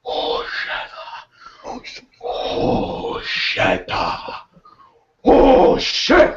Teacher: he'd always start like really low and like breathy, and he'd be like, "Oh shit, oh shit, oh shit," and he would get louder and louder and build.